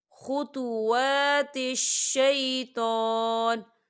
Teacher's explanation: تو وقف کی صورت میں ہم نون جو ہے وہ ساکن ہو جائے گا